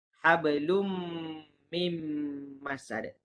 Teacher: Jadi perlu didengungkan sebanyak 2 harakat. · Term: idgham ma'al gunnah